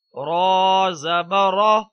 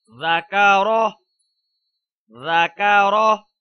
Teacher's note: زبر کی وجہ سے رو کو پر کر کے ادا کریں گے